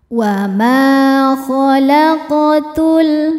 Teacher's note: Khalaq. Huruf qaf sukun dihukumi qalqalah sughra karena qafnya qaf sukun dan berada di tengah-tengah bacaan. Cara bacanya dipantulkan dengan pantulan yang kecil.